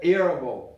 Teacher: esse T vira meio D, meio R